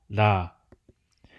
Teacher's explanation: the sole liquid consonant is an alveolar lateral tap